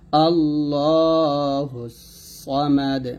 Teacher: হুস সদ জবর সদ মোটা হবে আল্লাহুস সামাদ হুয়াল আবেতার এখানে দাল সাকিন হবে বাট দাল কলকলা